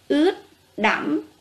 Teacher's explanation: Tiếng ướt, các em chú ý âm cuối âm tờ. Tiếng đẫm, vần âm, thanh ngã.